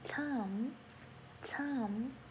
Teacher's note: thời gian thì mình sẽ nói là time, bật âm t